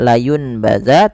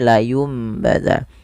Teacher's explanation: Sehingga nanti bunyinya kan awalnya nun bunyi n. Karena dia bertemu ba nanti bunyinya diganti dengan bunyi huruf mim atau huruf m. Maka tidak lagi dibaca layunbaz tapi layumbaz dan sambil ditahan dua harakat. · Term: iqlab